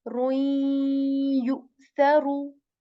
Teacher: when we enter the ru sound into ya, rui, rui, we stay on ya for a bit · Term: incomplete idgham